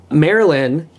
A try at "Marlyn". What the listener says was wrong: Marlin. Marlin. M-A-R-L-Y-N. It's not M-A-R-Y-L-Y-N.